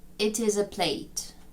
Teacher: і слово Plate It is a Plate і інтонація пішла донизу